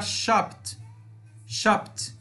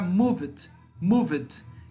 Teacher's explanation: Aqui no shop vai ficar shopped, shopped, com som de T. Aqui no move, como vibra, vai ficar moved, moved. E aí já um som de D no finalzinho